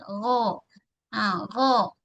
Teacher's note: pangkal lidah kita, dia terangkat bahagian pangkal so bunyi tebal